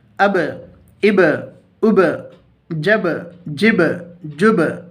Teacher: حروف قلقلہ 5 ہیں: قاف، طا، با، جیم، دال، جن کا مجموعہ قطب جدن ہے۔ جب ان پر جزم ہو تو ان کو پڑھتے وقت ان کے مخرج ٹکر کھا کر الگ ہو جاتے ہیں، ان کے علاوہ کسی جزم والے حرف میں قلقلہ نہ ہوگا۔